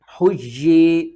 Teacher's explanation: ایک یا کو سختی کے ساتھ پڑھیں گے، دوسرے یا کو کھینچ کر پڑھیں گے ایک الف کے برابر